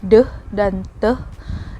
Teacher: ini merupakan bunyi alveolar yang diucapkan secara meletup atau plosif.